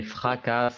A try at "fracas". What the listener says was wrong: Fracas. On ne prononce pas le S.